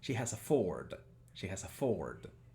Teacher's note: las vocales son más largas en realidad son plenamente largas